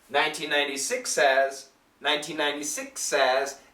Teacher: there is a small H sound but we can actually cancel the H sound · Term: the seven H's